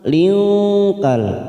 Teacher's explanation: kita samarkan bunyi kasr tanwin